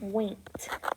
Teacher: When I say the word winked, I hear a T sound at the end.